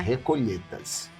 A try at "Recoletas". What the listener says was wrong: Com L. LH não, só L. Só L mesmo.